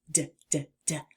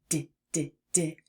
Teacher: We call the D sound a voiced alveolar plosive. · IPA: /d/